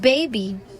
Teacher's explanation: in baby this is a voice by label plosive means that it is produced by bringing both lips together and producing sound with vocal cords vibrating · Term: voice bilabial plosive